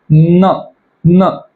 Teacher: त्याला दंत अनुनासिक असे म्हणतात तुम्ही स्वतः ट्राय करून बघा न तुमचे जीभ आहे ती दाताला टच करत असेल आणि हवा ही नाकातून बाहेर जात असेल